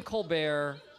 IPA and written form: koʊlˈbɛər (Colbert)